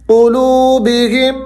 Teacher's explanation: قلوبہم، یہاں میم مشدد ہے، تھوڑا سا آپ نے یہاں پر جذب کرنا ہے. قلوبہم، ناک میں آواز کو لے کر جانا ہے، غنہ کرنا ہے.